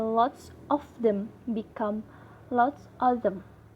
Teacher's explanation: omit the V sound in the of before the consonant